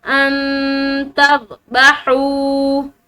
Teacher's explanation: नून साकिन के बाद ता हरूफ इख्फा में से, तो इसको यहाँ पर नून पर इख्फा करेंगे